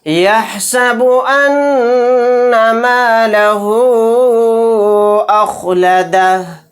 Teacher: यहाँ पर हा के ऊपर उल्टा पेश है, उल्टा पेश भी हरूफ मद्दा का कायम मकाम होता है। तो यहाँ पर उल्टा पेश के बाद हमज़ा दूसरे कलीमे में है अलिफ की शक्ल में, तो यहाँ पर मद्द मुनफसिल का कायदा होगा। इस मद को हम 3 अलिफ की मिक़दार खींच कर पढ़ेंगे